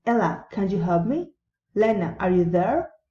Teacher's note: Direct addresses, rising intonation.